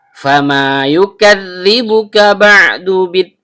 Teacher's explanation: Fa huruf bibir, yaitu perut bibir bawah bertemu dengan ujung gigi seri atas.